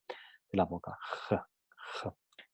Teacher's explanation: Es un sonido fricativo muy posterior, aunque el lugar exacto de articulación varía dependiendo del hablante.